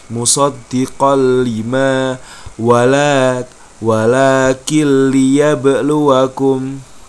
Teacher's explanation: Fathahtain bertemu dengan huruf lam, maka fathahtainnya dilebur langsung masuk ke huruf lam. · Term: idgham bila ghunah